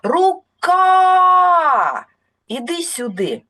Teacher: Це голосний звук а я його навіть протягую довше і сильніше тому саме на цей звук падає наголос